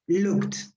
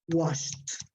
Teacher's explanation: the last sound is produced with your lips but it's here there is no vibration there so in that case the pronunciation is like a t